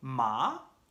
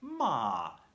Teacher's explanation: non é o mismo decir ma, con entonación ascendente, que decir ma, con entonación descendente.